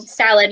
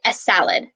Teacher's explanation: letter is really hard for people to pronounce as s because it always has the e sound in front of the s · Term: e sound before